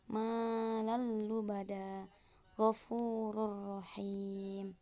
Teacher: Kemudian idgham bila gunah dibaca ketika huruf nun sukun atau tanwin bertemu dengan huruf lam atau ro, serta proses pembacanya tidak disertai dengan dengung